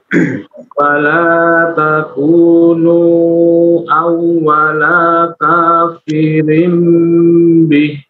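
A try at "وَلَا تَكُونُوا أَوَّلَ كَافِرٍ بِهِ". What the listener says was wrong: Baik, untuk huruf lam. Awwalaka. Itu tidak dibaca panjang ya. Ininya untuk huruf lamnya. Awwalaka langsung. Mad jaiznya di 4 harokat ya. Mad jaiz 4 harokat.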